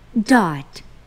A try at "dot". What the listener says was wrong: 오케이, B가 부 소리네 지금. But 되게 but, but가 아니고 dot.